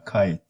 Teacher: When you say kite, so at the end, that's called aspiration, like that puff of air that comes at the end of the sound when you release it